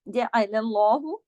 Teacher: نام ہے تو اس میں زبر ہے اس سے پہلے، تو اس لام اس میں جلالہ ہے تو لام موٹا ہوگا · جیم عین کو بیچ میں گلے سے پڑھنا ہے